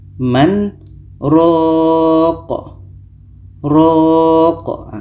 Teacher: Jadi kesimpulannya adalah kalau kita temukan yang seperti ini, kin ini pendek, maka yang ro ini panjang tetap kita panjangkan, baru matikan qafnya.